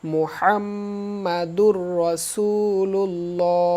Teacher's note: এখানে হা কণ্ঠ চেপে হবে